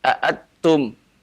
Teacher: kalau antum baca aatum, nunnya dimasukkan ke dalam ta, ini berarti idgham.